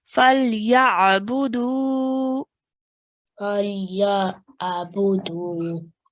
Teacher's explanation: The dal has a waw mud straight after, so that's why we're stretching for 2 counts over here.